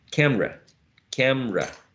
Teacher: this word may sound uh as two syllables not only three syllables